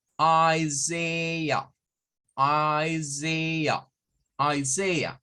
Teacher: I, Z. Y esta AH va a sonar a un schwa